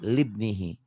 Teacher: Ini namanya hamzah wasal. Alif yang diwasal, alif yang disambung. Jadi alifnya nggak dibunyi gitu ya.